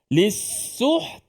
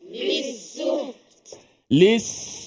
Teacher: Ta makhraj Ta di mana makhraj Ta ini di hujung lidah hujung lidah kita ini melekat ataupun bertemu ke belakang gigi ataupun gusi pengikat gigi atas kita ni okey jadi bila kita luh tekan dalam tekan suara kita stopkan